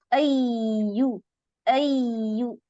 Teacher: जज़ाकल्लाह टीचर आइन का मखरज और या का नबर अय्यू अय्यू नबर करती हैं, इसमें रखावा है, आवाज चलती रहती है, एकदम से ब्रेक जी नहीं आता